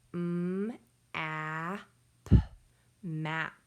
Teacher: I hear that A is saying ah, so it is a short vowel.